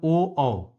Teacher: अ कंठ से और उ ओठ से बोला जाता है इसलिए ओ और औ यह दोनों ही कंठ और ओठ की सहायता से बोले जाने वाले वर्ण है